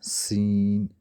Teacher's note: سین اور صاد میں سیٹی کی آواز پیدا ہوگی